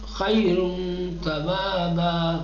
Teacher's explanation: ٹھیک، موٹا نہیں بناؤ. نون کو پوری طریقے سے ادا نہیں کرو، آدھا نون پڑھو